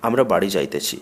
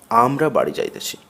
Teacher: আমরা শব্দে আ এর উপর ঝোঁক বা জোর পড়ছে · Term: শ্বাসাঘাত